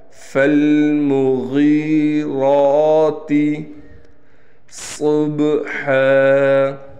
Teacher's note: غین موٹے حروف میں سے ہے، لہٰذا اس کو ہم موٹا پڑھیں گے۔ را بھی موٹا ہے اور را پر کڑا زبر ہے، موٹا کا مطلب اس کو موٹا کر کے پڑھیں گے۔